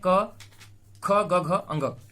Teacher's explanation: तो अ का, क वर्ग का, ह का और विसर्ग का, इन सभी का उच्चारण स्थान क्या है, कंठ है।